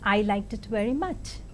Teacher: falling tone is used in ordinary statements without any implications